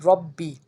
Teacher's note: मीम रा ज़मीर रा ज़बर रा, मिर रा, रा बा ज़बर रा, बाज़े बी, रब्बी। यहाँ पे जो रा है उसको पुर पढ़ेंगे क्योंकि उसके ऊपर ज़बर है। मिर रब्बी, काफ मीम पेश कुम, मिर रब्बिकुम, मीम साकिन है उसके बाद आइन है तो यहाँ पे इजहार शफ़वी होगा, यहाँ पे गुन्ना नहीं होगा।